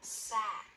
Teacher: the vowel will go up and come down in pitch. Sat. In an unstressed syllable, the vowel is flatter and lower in pitch, quieter.